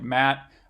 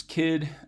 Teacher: this is alveolars versus velars, and I've got voiceless versions here